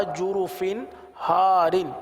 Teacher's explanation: تنوین کے بعد ہا ہے، ہا حروف حلقی میں سے آ رہا ہے، لہٰذا یہاں پر اظہار کا قاعدہ ہوگا، گنہ نہیں کریں گے، اور ہم نے گنہ نہیں کیا.